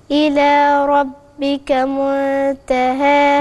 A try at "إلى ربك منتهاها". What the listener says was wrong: اشبعي الإخفاء. منتهاها.